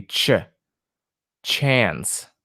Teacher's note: We have our t sound and then we have our sh sound. So it's going to be ch, chance.